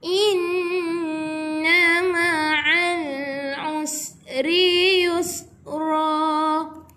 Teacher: Ini pun sama, kita jumpa lagi sekali huruf nun yang ada syaddah. Jadi kita kena dengung 2 harakat.